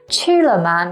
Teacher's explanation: to eat is the first tone high and flat and la ma they are both neutral tone which means there · la ma they are both neutral tone which means there is no stress so you say it quick and kind of quiet